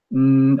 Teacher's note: all the sound comes out the nose